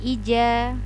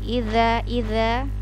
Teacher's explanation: ini adalah huruf dza Za diujung lidah